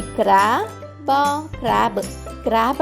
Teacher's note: యొక్క శబ్దం మనం క ర అని కాకుండా క్ర అని తీసుకుంటాం గమనించండి శబ్దం క ర కాదు క్ర అవుతుంది